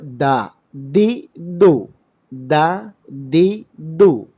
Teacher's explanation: ദാ ദി ദു എന്ന് പറയുമ്പോൾ ശ്വാസസഞ്ചാരം ബ്ലോക്ക് തടസ്സം ഉണ്ടാകും ശബ്ദസഞ്ചാരവും തടസ്സം ഉണ്ടാകും · വിന്റെ അറ്റത്തിന്റെ തല എന്ന് പറഞ്ഞാൽ മേൽഭാഗം നാവിന്റെ മേൽഭാഗം അത് നമ്മൾ മേലെ നമ്മുടെ മേലെ മുൻപല്ലുകളുടെ മുരടിൽ അഥവാ അസുലിൽ അടിത്തറയിൽ കൊണ്ടുപോയി സ്പർശിപ്പിക്കും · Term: ശിദ്ധ ജഹ്, ദാൽ